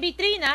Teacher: la mayor fuerza de voz se da en la sílaba tri, y como queremos la vocal, lo hemos pintado en la letra I.